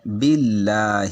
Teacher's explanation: لفظ اللہ کا رول یہ ہے کہ لفظ اللہ سے پہلے والے حرف پر زبر ہو یا پیش ہو تو لفظ اللہ موٹا کر کے پڑھتے ہیں، زیر ہو جیسے باللہ تو باریک کر کے پڑھتے ہیں، اس لیے یہاں پہ باللہ پڑھیں گے۔